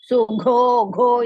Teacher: ಘೋ ಇಸ್ ಮಹಾಪ್ರಾಣ ದೀರ್ಘ